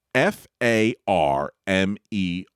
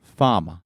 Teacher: he wants you to say it without hitting that R at the end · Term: lack of rotacity